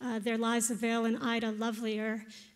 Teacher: just alternating a single syllable in each of the weak and strong positions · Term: iambic meter